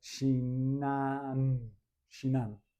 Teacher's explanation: Shinan, and notice I'm nasalizing the N.